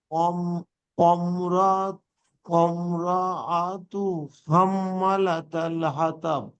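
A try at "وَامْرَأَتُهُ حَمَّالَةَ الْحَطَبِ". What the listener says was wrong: হাতা না, হাত, হাত। ওম না, ওয়া, ওয়া, ওয়ামর, ওয়ামর, হাতব।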